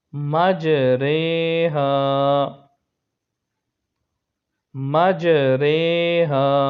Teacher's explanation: امالہ کی رو کو اردو کے لفظ قطرے کی رو کی طرح پڑھیں، یعنی ری نہیں بلکہ رے پڑھیں۔ امالہ کے ہجے اس طرح کریں: میم، جیم، زبر مج، رو امالہ والی، رے کھڑی زیر رے، مج رے، ہا الف زبر ہا، مج رے ہا، مج رے ہا۔